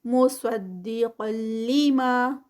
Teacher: قاف ہیوی ہے، اور تنوین جو ہے وہ آگے لام میں مرج ہو رہی ہے، ادغام ہے لیکن وداؤٹ غنہ والا، ود غنہ نہیں ہے کیونکہ لام اور را کا جو ادغام ہے وہ وداؤٹ غنہ کے ہوتا ہے.